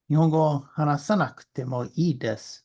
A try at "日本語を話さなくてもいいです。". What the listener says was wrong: Good, good, good.